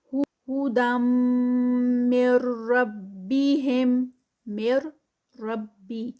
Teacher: اس کو ڈائریکٹ میم کو مرج کریں گے آگے را کے ساتھ، اور یہ جو ادغام ہوگا یہ وداؤٹ غنہ ہوگا